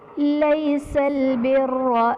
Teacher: لیس البر میں را پر زبر را کو پر پڑھا جائے گا